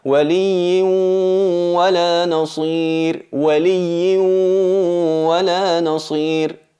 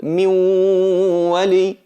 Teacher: el sonido de la nun, el cuerpo de la nun, no está presente, pero sí la nasalización, sí la característica que la acompaña siempre, y es ese sonido que sale de la cavidad nasal. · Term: gunna